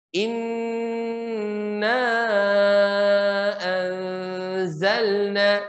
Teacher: Inna itu gunnah. Memasukkan ke hidung dan memang masuk hidung.